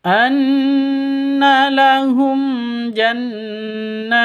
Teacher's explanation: jannat itu panjang boleh 2, boleh 4, boleh 6 ketukan karena mad arid lisukun.